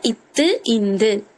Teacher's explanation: இத்து சொல்லும் போதே நம்ம இந்த இத்து இந்த அந்த பல்லுல படுதா, முன்னாடி பல்ல. இப்ப மேல்வாய் பல்லோட அடிய இந்த நாக்கோட நுனி தொடறதுனால